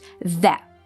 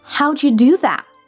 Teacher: That ends with a glottal T. The T is not fully released, it's cut off at the back of the throat.